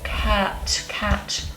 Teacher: We've got the vowel front, open, cat, cat, unrounded, cat, and I'd say short.